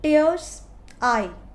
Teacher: Tears, I, दोनों ही stressed हैं, and there is स्पॉन्डी।